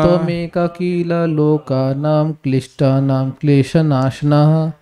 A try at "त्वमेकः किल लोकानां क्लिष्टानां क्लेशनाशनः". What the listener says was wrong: त्वमेकः किल लोकानां क्लिष्टानां क्लेशनाशनः। देखिए वो कील नहीं है उसमें कील मत ठोक दीजिए आप, किला है, कील नहीं है भाई, हिंदी मत बोलिए, किला किला।